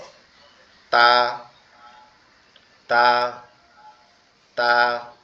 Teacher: জিহ্বার আগাটা কোথায় লাগবে উপরের দুই দাঁতের গোড়া সঙ্গে লাগবে লেগে উচ্চারিত হবে তা এরকম ভাবে।